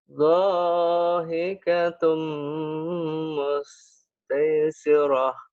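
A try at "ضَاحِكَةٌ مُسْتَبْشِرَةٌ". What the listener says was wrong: bukan tai ini mah titiknya satu tabsyirah. Dohikatum.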